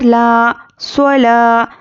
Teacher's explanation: अलिफ मद्दा है, एक अलिफ के बराबर खींच कर पढ़ेंगे